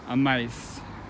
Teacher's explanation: the T just dropped and the A and I coalesced into a diphthong